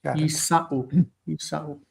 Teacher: because it's in pause at the end of the verse, the vowel returns, the a, as the historical vowel and stress, and then there's no shva, so you have to take the dagesh back as well.